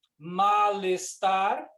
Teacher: eu junto o l com o e